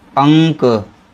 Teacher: केवल नाक से आवाज निकलती है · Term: अनुस्वार